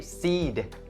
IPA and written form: siːd (seed)